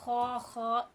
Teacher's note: जिस तरह के खराटे लेते वक्त आवाज निकलती है ख वहां से हमारा ख का मखरज है